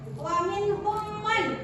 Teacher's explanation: Mem sukun bertemu dengan mem, bacaannya didengungkan. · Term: idgham mimi